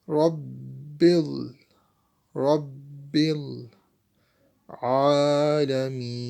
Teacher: We stretch Ain for 2 seconds because Ain has standing fatha or alif maddi.